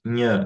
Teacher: NH representa a consoante nhan, né? O nhan, ele é uma nasal palatal